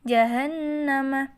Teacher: ada Non hidup bertasydid maka dibaca mendengung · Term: bacaan hunnah